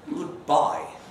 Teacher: in the case of farewells a fall to low sounds dismissive even hostile